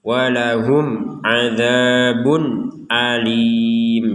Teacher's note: dengan jelasnya ini walahum adzabun Alim jadi ini dibaca dengan jelas tanwin bertemu Hamzah jangan sampai dengung atau samar